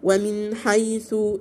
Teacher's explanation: النون ساكنة وراء حاء إظهار حلقي، طبعا الحاء من حروف الإيه إظهار الحركي، مش هجيب غن.